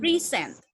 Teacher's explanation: yang pertama dia di stressnya di pre, jadi bacanya adalah present.